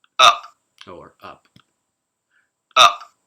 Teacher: at the ends of words or the ends of phrases in english these consonants can be not audibly released at all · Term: very quiet consonant release